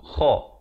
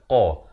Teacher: Kha ini makhrajnya di hujung kerongkong. Kha. Manakala qaf pula makhrajnya di pangkal lidah. Qa. Kha, qa.